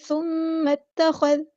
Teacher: ثم اتخذ، خا ہمارا ہیوی لیٹر ہے، پورا ادا کریں گے، ثم اتخذ، زال باریک لیٹر ہے، نرمی سے ادا کرنا ہے، اس کو سختی سے ادا نہیں کرنا، ٹھیک ہے۔ اوپر والے 2 دانت کا جو کنارہ ہے یعنی ثنایا علیا کو ہم زبان کی ٹپ یعنی نوک کے اوپر رکھیں گے، زبان کے اوپر رکھیں گے، ٹھیک ہے۔